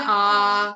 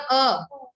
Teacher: तो दीर्घ स्वर में लंबी साउंड आ रही है और ह्रस्व स्वर में छोटी साउंड